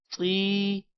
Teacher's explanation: طا کے بعد یا ہے لمبا کریں گے اور طا کو موٹا بھی کریں گے